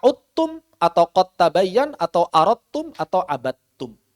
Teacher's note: Maka di sini semua dalnya lebur, hilang. Jangan dibaca dalnya.